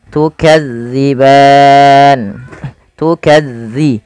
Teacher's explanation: jangan sampai terbaca dengan tukazziban dengan huruf z tapi dia dza